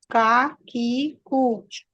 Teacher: जबान का पीछे का हिस्सा सख्त तालू से टच होगा। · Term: काफ